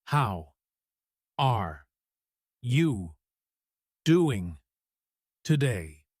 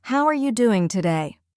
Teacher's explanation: Reads unnaturally word by word monotone. · Reads naturally flowing with rising intonation.